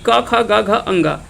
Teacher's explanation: क वर्ग का उच्चारण जो होता है वो कंठ से होता है